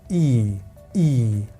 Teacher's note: long E, which means we are going to have that little slide, E, E, and then we are going to finish with N.